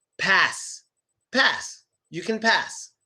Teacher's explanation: at the end of the word, we do pronounce the S sound, but just softer